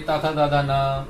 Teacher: हमारी जीवा जो है वो दांतों की तरफ रुकी हुई है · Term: ता वर्ग